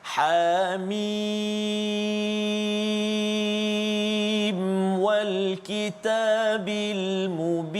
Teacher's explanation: Jadi perpindahan daripada mim kepada waw itu jangan dengung.